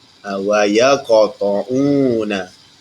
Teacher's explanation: Qalqalah surah ni adalah sederhana. Sederhana kuat. Dia tidak terlalu kuat. Dia ditekankan hurufnya tapi sederhana.